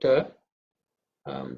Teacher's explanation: This is not aspirated ta, but it is a simple one, alpa prana or unaspirated.